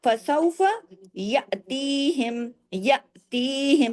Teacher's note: حمزہ الف ہے جھٹکے سے پڑھا، یاتی تا یا زیر تی دو حرکت کیا جائے، یاتیہم.